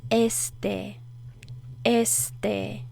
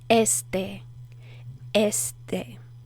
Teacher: Put more of the emphasis on the first E, not the last E.